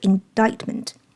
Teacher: indictment这个单词一共有3个音节，重音是第2个